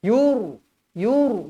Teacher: ro tebal kerana sebelum huruf ro ni berbaris depan jadi bila berbaris depan atau atas sebelum huruf ro mestilah dibaca